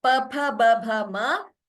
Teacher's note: So that sutra tells us that the two swaras, and pavarga, the pa group of letters and consonants, pa, pha, ba, bha, ma, and upadhmaniya. For these, we have to use the lips